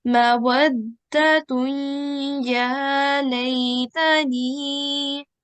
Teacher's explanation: So over here we can see the waw will be joined to the da with the tashdid, and then the ta with tanveen will be the one that we join to ya mushaddad whilst doing our 2-second nasal sound, as it's the rule with ghamin nakis, like this.